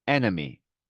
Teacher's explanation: enemy의 두 번째 이는 네, 슈아 발음이죠.